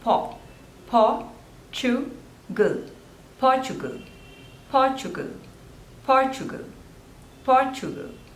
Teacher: So there are 3 syllables and the stress is on the first one.